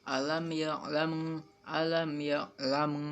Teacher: huruf mim mati bertemu dengan huruf ba maka dibaca samar dan dengung